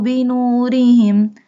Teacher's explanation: When ra has kasra sign, we doesn't bold ra.